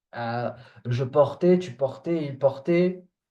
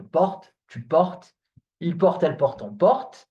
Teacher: the E at the end is not pronounced. Okay? Forget about it. It's not pronounced. So you stop at the T sound.